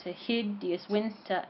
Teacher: the emphasis falls on winter the win of winter